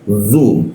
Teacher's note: huruf zu itu posisinya di belakang lidah, di belakang gigi lidahnya agak dibengkokkan sehingga udara agak terhambat.